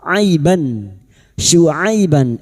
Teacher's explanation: Hamzah, ha, ha, ko, ain, gain. Maka bunyi fathah tanwin atau fathatain dibaca jelas tanpa mendengung. Aiban syuaiban idhar halqi.